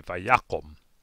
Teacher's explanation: syllable as a result of the accent rescinding or moving back that last syllable becomes closed and unaccented and so the kamats becomes the kamatsukatan and we say vayakum